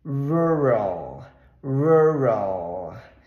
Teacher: esse R Você vai enrolar um pouco a sua língua R bem caipira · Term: r caipira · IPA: /ˈɹʊɹəɫ/